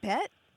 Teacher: it does have that tone scoop, but I think it's more of a challenge than a question.